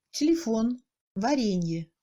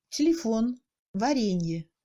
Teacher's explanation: on entend plutôt un E muet à la place d'un «е»